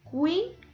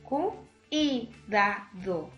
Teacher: ¿Por qué hay un dictongo? Porque se van a pronunciar en una sola emisión de voz las vocales U, I, que son dos vocales cerradas